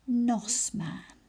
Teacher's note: I can hear nos, a short O in the middle, and I can hear man, a short A in the middle. 2 syllables.